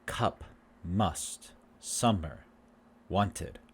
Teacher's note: it's in the middle and the central and it's not tense but relaxed to make this sound the uh sound lips should be relaxed